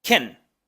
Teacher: en un discurso cotidiano se pronuncia con una k y enseguida la shua